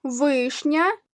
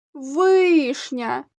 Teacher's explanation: вишня два склади вишня наголошений перший склад